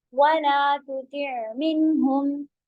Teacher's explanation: आइन को कंटिन्यू थोड़ा रखना है, बैनिया सिफात है